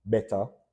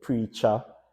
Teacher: we often replace that ER sound, that ER pronunciation with a A